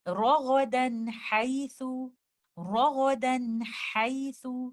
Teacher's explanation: when it is idhar of nun sakina, we give the timing of incomplete gunna